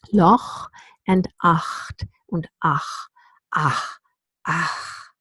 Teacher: we have the voiceless uvular fricative